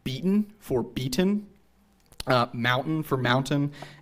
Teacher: if a t- sound would occur before an unstressed syllable which contains the consonants n and NG then the T will not be pronounced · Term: te glottalization